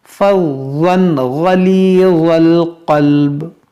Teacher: غلیظ غین موٹا کریں گے ضا موٹا کریں گے · تنوین کے بعد غین حروف حلقی ہے تو یہاں پر اظہار کریں گے یعنی غنہ یہاں پر نہیں ہوگا